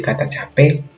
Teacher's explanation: Yang kelima adalah penggantian diftong AU dan AI dengan O dan E.